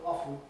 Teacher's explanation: the predominant one is still often with no T, like soften